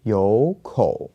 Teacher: But remember, if you have two third tones here, that you have with and the first third tone actually changes to a second tone